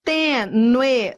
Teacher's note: Tenue, ó, é um ditongo crescente, eu fui do fraco pro forte.